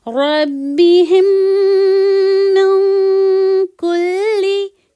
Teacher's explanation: یہ میم ساکن میم میں مرج ہو جائے گا اور ناک میں ساؤنڈ جائے گا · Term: ادغام شفوی